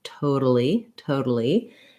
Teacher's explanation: a flap so i'll write it here as a d um we aren't really making a true d where we block the air and burst it out like toad but just lightly touching up with the tongue and using that voice flap sound · we do say the a in totally but it sounds like a schwa it sounds like an uh